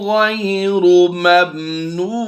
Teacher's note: 2 ज़ेर की तनवीन को हम वक़फ़ में जज़म से कन्वर्ट करते हैं, तो यहाँ पर हम सुकून आर्जी की वजह से मद्दे आरिज करते हुए ज़्यादा लंबा करेंगे